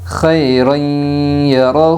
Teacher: 2 زبر تنوین کے بعد یومن کے 4 حرفوں میں سے یا آئی ہے، اس لیے 2 زبر تنوین کو غنہ کے ساتھ ملا کر پڑھے گے۔ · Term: ادغام مع الغنہ